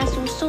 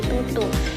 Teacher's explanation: Misalnya susu menjadi tutu, itu mengganti S dengan T. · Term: substitusi